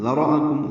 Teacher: ذراکم ذال نرمی سے پڑھیں گے، را پر پڑھیں گے، حمزہ کو جلدی سے ادا کریں گے، واضح پڑھیں گے بالجہر. کاف باریک ہے، میم ساکن پہ اظہار شفوی ہے.